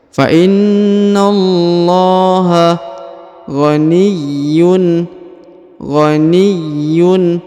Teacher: huruf Ya ditahan dan ditekan karena berharakat tasdid